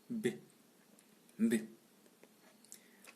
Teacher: Orale, occlusive, bilabiale, sonore.